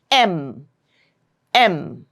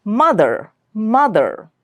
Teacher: Nasal means when you pronounce this word, this sound, the airflow is channeled through your nasal passage. It doesn't come out of your mouth. The airflow is coming out through the nose.